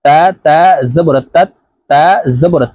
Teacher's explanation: তাশদি হরফ দুইবার উচ্চারণ হবে একবার পূর্বের হরকতের সঙ্গে আরেকবার নিচ হরকতের উচ্চারণ হবে